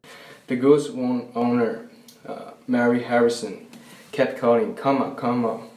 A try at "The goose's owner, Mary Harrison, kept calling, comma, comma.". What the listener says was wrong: The Goose's owner, Mary Harrison, kept calling, comma, comma. Okay, he inserts something after goose. He didn't say gooses. It was something like goose, what? It's some sort of W there. Owner.